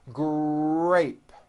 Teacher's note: in the word grape, the R sound is stronger and you even hear it more than the G sound. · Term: R blends